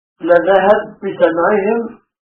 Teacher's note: وأدغم السوسي الباء الأولى في الثانية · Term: الإدغام